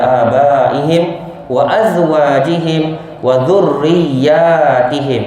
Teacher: Kita mengamalkan bacaan 4 harakat, mad wajib muttasil sebanyak 4 harakat pada abaihim